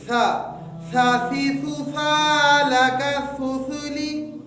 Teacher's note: مین اس تختی کے مشق کرنے کا مقصد یہ ہے کہ جس جگہ سا کا مخرج زبان کے ثنایا علیہ، یہ زبان کی نوک ثنایا علیہ پر لگے، پھر نکلتا ہے سا